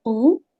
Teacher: یہاں پہ واو مد ہے 2 حرکت